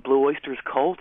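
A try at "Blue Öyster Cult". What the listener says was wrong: It's, I think you said Blue Oysters. It's one oyster. Blue Oyster Cult. Yeah, no, but it's the band name is Blue Oyster Cult.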